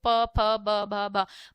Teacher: बार-बार क्या हो रहा है? ओष्ठ टच हो रहे हैं।